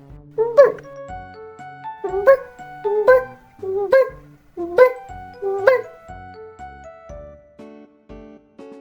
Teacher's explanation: Коли ми вимовляємо звук Б, губи змикаються, як в поцілунок. Повітря не виходить, поки губи не розімкнуться. Потім губи відкриваються і чути б. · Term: Дзвінкий приголосний звук